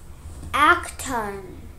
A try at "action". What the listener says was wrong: What's the sound of TION? Shun, shot. Shun. Not tan. It looks like tan, but it's T. Shut.